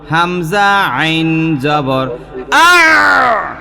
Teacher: হলকের মাঝখান, একটা কথা বলে রাখি যে যতগুলো হরফ আছে, সমস্ত হরফের মধ্যে যেই 2টা হরফের উচ্চারণ আমাদের নিকট কঠিন মনে হয়, তার মধ্যে এই 2টা হরফ, একটার নাম হইল আইন, আরেকটার নাম হইল হা। এই 2টা হরফ চাপ দিয়া বলতে হয়, গলার মধ্যখান থেকে এই 2টা হরফ উচ্চারিত হয়